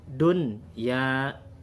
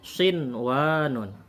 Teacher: Ini tetap dibaca ijhar. Dun ya, nunnya jelas. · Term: ijhar mutlak